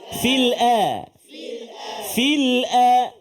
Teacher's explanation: Hati-hati menyebut kalimah al-ardi. Hamzah itu jangan terkesan dengan ketebalan. Tebal pada huruf ra dan juga huruf dad. Jangan bunyi fasadin fil ard.